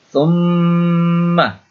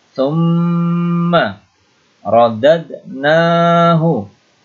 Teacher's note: Ini gunnah musyaddadah. Mimnya berdengung.